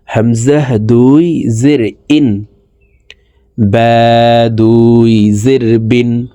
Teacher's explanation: কারণ আলিফে হরকত তানবিন ব্যবহার হইলে এই আলিফকে হামজা বলে পড়িতে হয়। হামজাহ দুই জের ইন নিচের দিকে ধাবিত করে নুন যুক্তভাবে তাড়াতাড়ি করে পড়বো